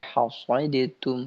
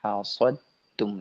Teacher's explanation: Tidak baca hasadatum, tidak, tapi hasadtum, langsung ke huruf ta. Hasadtum. Nah, tadi dal bertemu dengan ta.